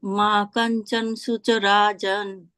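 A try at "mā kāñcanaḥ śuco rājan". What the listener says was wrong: Ma Kanchana. It is full na. Ma Kanchana Shucho Rajan.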